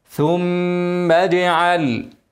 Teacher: غلط ثم ثم ثم ثم والميم المشدده انا قلناها حركتين وبعدين حرف الجيم هنقل قله مع الترقيق لانه حرف مرقق القلقله الحرف مرقق بتبقى قلقله مرققه الحرف مفخم قلقله مفخمه ثم